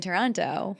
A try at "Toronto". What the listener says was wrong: Whenever you come, Toronto, we don't pronounce the second T. Toronto. There you go.